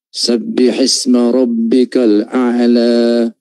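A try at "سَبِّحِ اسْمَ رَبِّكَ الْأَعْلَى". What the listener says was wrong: A'la, huruf ainnya jangan goyang. Huruf ain tasydidnya jangan ada goyang-goyang kayak qalqalah dan sebagainya.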